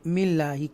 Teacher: ये अल्लाह के नाम को तरकीब के साथ बारीक पढ़ेंगे मिल्लाही, क्योंकि उससे पहले ज़ेर है